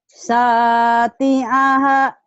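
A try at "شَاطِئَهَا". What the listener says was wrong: Syati'aha. Syati'aha. Shin yang belum keluar nih. Kebayang gak sih gosok gigi bagian bawah dan atas? Mulutnya kan dibuka. Terus sya. Giginya rapat, giginya nyambung gitu. Kebayang gak ya nyikat gigi bagian bawah dan bagian atas?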